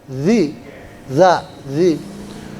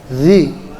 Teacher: Kalau zal itu ujung lidahnya keluar sedikit